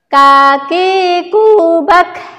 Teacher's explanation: Ya, kemudian kaf ini, jadi huruf kaf ini memiliki sifat hames. Jadi cara pengucapannya ketika dia sukun itu ada nafas yang keluar